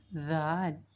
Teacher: Zal is also pronounced from the tip of the tongue, but the tip of the tongue touch the lower side of the upper 2 incisors